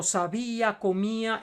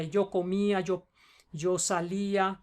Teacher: la fuerza de la pronunciación cae sobre la i, que es una vocal débil, y si cae sobre una vocal débil, que en español son la u y la i, tienes que ponerle la tilde.